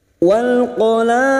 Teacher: Dal yang mati di akhir kalimat namanya qalqalah kubra. Jangan lupa dipantulkan dengan kuat.